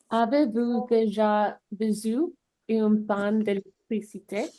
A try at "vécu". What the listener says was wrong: pas vécu, mais vécu. Donc ça, quand tu vois cette lettre ici, c'est un S, comme ça. Mais ici, c'est un C normal. Donc c'est vécu.